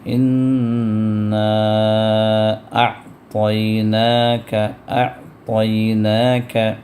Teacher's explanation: مد منفصل ہے، تو مد منفصل 4 حرکت تک کھینچنا جائز ہے۔ اگر 2 حرکت بھی کھینچ دیں تو بھی کوئی حرج نہیں ہے، تو لہٰذا یہاں پر ہم کھینچتے ہیں۔